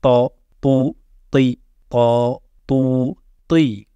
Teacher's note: il faudra monter le bout de la langue au début des incisives supérieures. Et le fond de ta langue va monter, va se soulever aussi vers ton palais pour former ce son grave. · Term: Ta emphatique